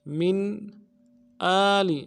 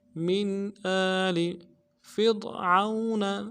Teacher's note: حمزہ کے اوپر کھڑا زبر ہے، ایک الف میں کھینچیں گے، اور لام کو نرمی سے ادا کریں گے